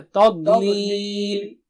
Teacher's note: تا پتلا ہے اور ضاد بہت موٹا اونچا ہے